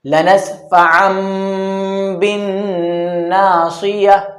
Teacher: تنوین کے بعد با آ گئی تو اب اس تنوین کے اندر جو این کی آواز آنی چاہیے تھا اب وہ میم کی آواز سے بدل جائے گی. لنسفعا بن ناصیہ، یہی بتایا تھا بھیس بدل کر آنا. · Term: اقلاب